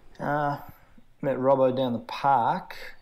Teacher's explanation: Australians often say clauses within a statement with intonation that rises at the end, like a yes or no question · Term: high-rising terminal